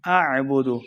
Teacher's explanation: عین کو حلق کے درمیان والے حصے سے ادا کریں گے